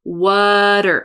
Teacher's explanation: Water, again, there's a flap there.